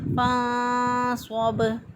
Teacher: نون ساکن کی آواز پر اخفا کرتے ہیں، آواز کو پوشیدہ رکھتے ہوئے ہم ادا کریں گے۔